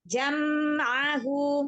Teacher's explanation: Sempurnakan lagi sifatul huruf pada huruf mim sukun. Ya, pada huruf mim yang sukun itu setingkat gunnah naqisah. Ya, tidak sempurna, kurang sempurna. Tetapi tetap ada gunnahnya. Jadi jangan ngerem.